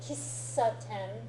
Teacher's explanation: It's technically it's called a glottal stop. It sounds like you start to say the consonant and then you have a little catch in your throat and then you say the consonant.